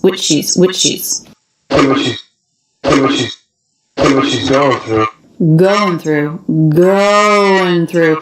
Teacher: one peak of stress and the rest of the sentence just comes as the intonation drops off